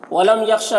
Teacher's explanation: ولم یخشا، میم میں اظہار شفوی ہو رہا ہے، سجل پڑھنا ہے۔ خا کو پر پڑھیں گے حروف مستعلیہ میں سے